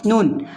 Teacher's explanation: सिरा ज़बान ऊपर के मसोड़े से मिलकर नून अदा होता है, या फिर दूसरी किताबों में ये भी लिखा जाता है कि नोक ज़बान ऊपर के मसोड़े से मिलकर नून अदा होता है, नून।